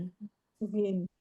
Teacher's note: Dia keluar dari tenggorokan bagian atas ya.